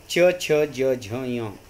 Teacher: तालव्य म्हणजे काय असतं, तर आपली जीभ टाळूला लागत असते.